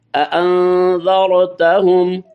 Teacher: کیونکہ ذال جو ہے یہ حروف اخفا میں سے ہے، لہذا یہاں غنہ ہوگا